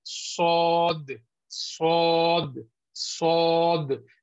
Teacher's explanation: There should not be a rounding of lips because this will add the voice sound of wow. And then this is the last place of articulation from the tongue.